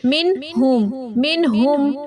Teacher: کر کے پڑھنا ہے نون ساکن کو، جیسے کہ من ہم، نون پورا پورا پڑھیں گے، ٹھیک ہے، غنہ نہیں ہوگا یہاں پہ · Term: اظہار